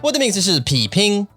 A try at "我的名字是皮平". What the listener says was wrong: I feel like you say 我的名字是皮皮。